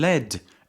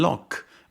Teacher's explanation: The vowel in lead is located in the close front area of the chart. In contrast, the vowel in lock is found in the open back area.